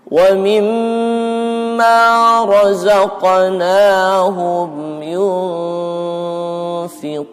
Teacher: Tapi kita masuk dulu ke makhraj fa, kemudian nunnya itu disamar, diikhfakan.